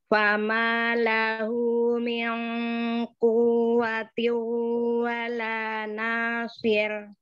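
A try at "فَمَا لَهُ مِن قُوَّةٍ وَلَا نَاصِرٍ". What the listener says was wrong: Kurang naber, enggak ada naber. Uwa, uwa, quwwati. Tiunya malah jangan dinaber. Irgham itu harus sembunyi-sembunyi masuknya, enggak boleh ketahuan.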